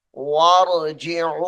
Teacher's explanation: इस लफ्ज को लंबा करेंगे, 2.5 उंगली के बराबर, यानी 2.5 अलिफ के बराबर